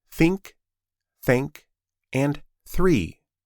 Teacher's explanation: your vocal cords are not active. There is no vibration. It's just air moving out of your mouth. To make this sound, the unvoiced th of think, thank, and three, gently place the tip of your tongue between your top and bottom teeth. · If you touch your throat while saying think, you should not feel any buzzing. The sound is soft, quiet, and airy.